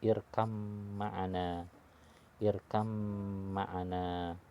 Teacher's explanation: Kebetulan mim huruf al-khayshum punya sifat gunnah, maka ditahan seukuran 2 harokat. · Ba karakternya dengan membuka bibir, membuka dua bibir atas dan bawah, sedangkan mim dengan menempelkan atau merapatkan bibir atas dan bawah. Jika bertemu dalam kata irkab ma'ana, maka jika disatukan bunyinya jadi irkam ma'ana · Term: mutajanisain